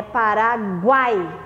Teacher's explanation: Eu tenho aqui o UA e o I junto. Então ele forma um tritongo por causa do som.